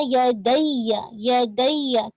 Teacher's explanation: थोड़ा सा आवाज आपकी एलिवेट करेगी, आपने फ्लैट नहीं पढ़ देना या दैया, तो सामने वाले को लगेगा कि आपने या के ऊपर शद नहीं पढ़ी है, या दैया, ठीक है। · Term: नबर का रूल